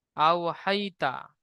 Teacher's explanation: ইয়া সাকিনের ডান দিকে জাবার এসেছে, ইয়া লিন হবে। ইয়া লিনকে নরম আওয়াজে তাড়াতাড়ি পড়তে হবে, টান দেওয়া নিষেধ।